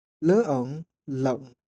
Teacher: L'important est d'enchaîner fluidement de E au un sans changer la forme de la bouche et sans ajouter d'autres sons vocaliques. L'air doit s'échapper uniquement par le nez.